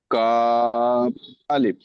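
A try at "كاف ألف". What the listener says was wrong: আপনি কিন্তু কাফ আলিফ বলেছেন। জি, এই টানটা দেননি বলে আমি আপনাকে পড়াকে রিজেক্ট করেছি যে আপনি ঠিক হয়নি, টান দিতেই হবে। আপনি কিন্তু অক্ষর ঠিক পড়েছেন, অক্ষর ঠিক পড়েছেন। যে কাপ বলে সর্বপ্রথম কফ কফ হয়তো বলেছিলেন, তারপর আপনি বুঝবেন কাপ। কাপটাকে একালি পরিমাণ টান দিতে হবে পড়ার সময়, তখন আপনি রাইট বলবেন।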